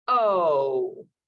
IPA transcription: oʊ